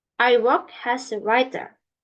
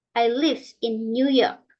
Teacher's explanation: the tone used at the end of the sentence is a fall